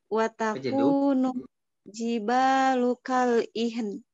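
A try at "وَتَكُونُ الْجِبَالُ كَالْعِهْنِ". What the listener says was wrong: Nah, ihn. Pakai ain, ihn. jangan ihan, ihan, la ihan, ihan, ihan.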